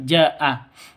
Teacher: Kalau mad bertemu dengan hamzah di satu kata, berarti mad wajib muttasil. Wajib 5 ketukan atau 6 ketukan panjangnya.